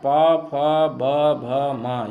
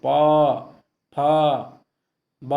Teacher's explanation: पा वर्ग प, फ, ब, भ, म ये होठों को स्पर्श करती, प, फ, ब, तो होठों को स्पर्श करने के कारण इसको हम कह देते हैं ओष्ठ से बोले जाने वाले, तो ये पा वर्ग है।